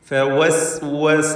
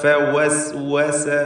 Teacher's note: എല്ലാ വാവും വ്യക്തമായി അതിൻ്റെ മഖ്റജിൽ നിന്നാണ് ഉച്ചരിക്കേണ്ടത്. 2 ചുണ്ടുകൾ വൃത്താകൃതിയിലായിരിക്കും വാവ് ഉച്ചരിക്കുമ്പോൾ. · ഫവസ്വസ, ഇവിടെ ഫാവും ശേഷം വാവുമാണ്. ഫ ആണെങ്കിൽ താഴെ ചുണ്ടിൻ്റെ മധ്യവും മേലെ മുൻപല്ലിൻ്റെ അഗ്രവുമാണ് ഫഇൻ്റെ മഖ്റജ്. എന്നാൽ വാവ് പൂർണ്ണമായും 2 ചുണ്ടുകൾ വൃത്താകൃതിയിലാക്കിക്കൊണ്ട് ഉച്ചരിക്കേണ്ട അക്ഷരമാണ്.